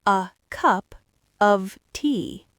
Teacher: The content words are cup and tea. Those are the peaks. The function words are a and of. Those are the valleys. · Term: schwa